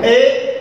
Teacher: देखिए ए इनकी तुलना में अधिक खुलेगा, ए यानी आधा मुंह खुल गया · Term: अर्ध विपरीत स्वर